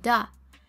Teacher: a merger of, or is comprised between the bilabial b and the velar g, landing just at the alveolar ridge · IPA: /da/